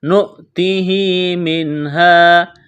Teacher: نون ساکن کے بعد ہا ہے، یہاں پر اظہار کریں گے، غنہ نہیں کریں گے، آواز ناک میں نہیں چھپائیں گے. وقف کریں گے تو سیم پڑھیں گے.